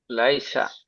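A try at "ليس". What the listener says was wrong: মাশাল্লাহ, খুব সুন্দর।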